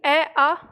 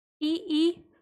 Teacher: अ का उच्चारण कंठ और इ का उच्चारण तालु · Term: कंठ्य